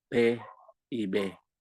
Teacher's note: la P es sorda y la B es sonora, pero las dos son oclusivas.